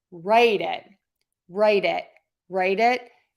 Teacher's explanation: This is a super subtle difference because when we say write it and we link that T to the vowel, it becomes a flap T, that super fast D sound.